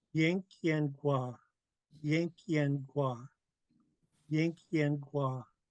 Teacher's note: And we're going to keep this low tone because we don't raise our tone in Haida when it's a question. So Gua's got to be kept low tone.